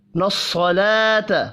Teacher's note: صاد بھی پر پڑھا جائے گا، لام پر کھڑی زبر ہے، 1 الف کے برابر کھینچ کر پڑھیں گے